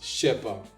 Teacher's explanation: In French, spoken French that is, it's pronounced je sais pas. They just compress all the words into one. Instead of saying je ne sais, je pas.